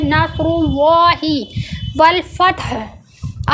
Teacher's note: अब नस्रुल्लाह में स्वाद जो है हुरूफ मुस्तलिया है, इसको होंठों को गोल करके पढ़ा गया है। नस्रुल्लाह और अल्लाह के लाम से पहले ज़बर और पेश आता है तो अल्लाह के लाम को गोल पढ़ा जाता है, इसलिए नस्रुल्लाहि वल फतह।